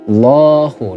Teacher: di situ ada bacaan fathah panjang mad tabi'i